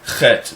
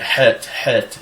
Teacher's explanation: Heth is a guttural h sound, which people commonly hear in Arabic. Now today a lot of people pronounce that chet, which is incorrect.